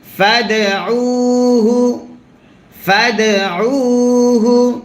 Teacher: দালে যদি সাকিন হয় কলকলা করতে হয়